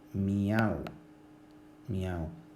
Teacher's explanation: Y finalmente hablaremos de los triptongos, que simplemente es el uso o la existencia de 3 vocales juntas en la misma sílaba